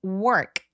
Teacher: work이라는 거는 알 발음 때문에 혀가 뒤로 이렇게 당겨지는 느낌이 들어요